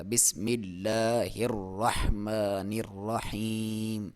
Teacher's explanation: یا ساکن سے پہلے زیر ہو تو اسے یا مدہ کہا جاتا ہے، جس کی لمبائی 1 الف کے برابر ہے